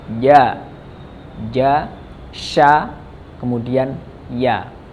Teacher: keluar dari tengah lidah bertemu dengan langit-langit